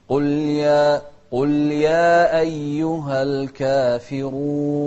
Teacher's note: الراء مضمومة، فإذا هي مفخمة